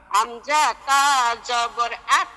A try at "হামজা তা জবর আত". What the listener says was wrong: পাতলা হবে, তায়ের উচ্চারণ পাতলা হয়।